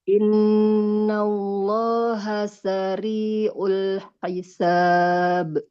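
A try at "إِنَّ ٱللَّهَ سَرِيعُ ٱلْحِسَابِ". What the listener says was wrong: Oke, sinnya tidak bertasydid Bu ya. Tidak innallaha sari'ul. Kalau seperti itu nanti seperti ada tasydid di atasnya.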